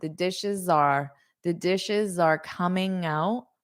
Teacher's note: notice that dishes are. You'll have a little bit of a Z sound.